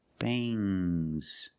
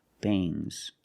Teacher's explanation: When you have S after NG, it makes the nasal sound but it also makes a little G sound, but not a hard, strong G. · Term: NG plus S